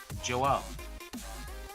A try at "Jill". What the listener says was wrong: It sounded like you said Joel. Actually, it didn't even sound like you put an L at the end of my name. You just said Joe.